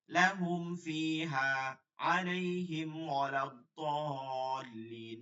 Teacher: ইজাহারের মতো করে মিম সাকিনকে বিশেষ সতর্কতার সহিত গুণা ছাড়া স্পষ্ট করিয়া পড়তে হয় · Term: ইজাহারে খাস